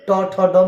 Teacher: ट ठ ड में जितने भी वर्ण है सब मुर्धन्य वर्ण है